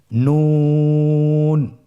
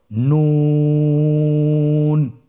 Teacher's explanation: নুন হরফটির উচ্চারণ স্থান হচ্ছে জিহ্বার আগা তার বরাবর উপরে তালুর সঙ্গে লাগিয়ে উচ্চারিত হয়। আপনারা স্ক্রিনে দেখতে পাচ্ছেন জিহ্বার আগা তার বরাবর উপরে তালুর সঙ্গে লাগিয়ে উচ্চারিত হয়।